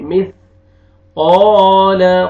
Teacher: قوف کو موٹا کر کے پڑھنا ہے، قال الف مدہ، الف سے پہلے زبر، قوف کو کھینچنا بھی ہے